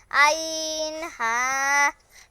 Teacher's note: ২ নম্বর মাখরাজ, হলকের মধ্যখান হইতে